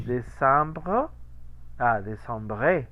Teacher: Evidentemente la E no se pronuncia, pero queda un rastro chiquito de aire porque se corta la vocal que sigue